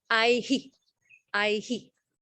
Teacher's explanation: Because you have it's a diphthong, right? So the visarga only echoes on the last vowel.